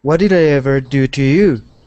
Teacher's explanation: That specific style of intonation is called question intonation. So when we ask a question, our voice goes up.